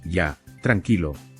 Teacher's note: el tono descendente transmite calma y empatía. Como ves, esta pequeña palabra cambia su intención con solo mover la voz un poco.